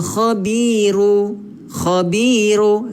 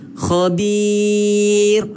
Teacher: Disebabkan dia nak berhenti, ra ni jadi mati. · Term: mad arid li sukun